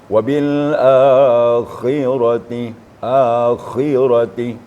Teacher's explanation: ada getaran di tenggorokan kita ya tapi jangan sampai tidak ada getaran maka dia akan mengarah kepada huruf ha